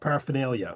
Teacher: I don't have an R. I don't say either. I say a schwa sound.